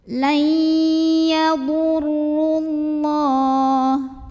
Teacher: jika wasol atau tidak berhenti, ro-nya dibaca pendek, madnya gugur. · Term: takhalus bil hadfi